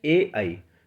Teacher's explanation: तो ए और आई दोनों कंठ तालु में जाते हैं। ए और आई दोनों कंठ तालु।